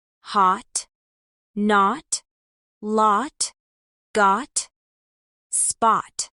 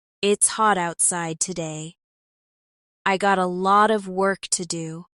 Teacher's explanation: the word hot in American English has a more open and round vowel than in some other forms of English